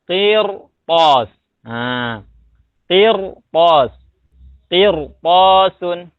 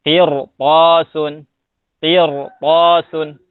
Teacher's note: Jadi to-nya huruf isti'la, sebelumnya ro sukun. Jadi dibacanya tebal. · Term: ro tafkhin